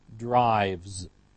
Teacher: the base form ends with the sound which is voiced so we have a voiced ending z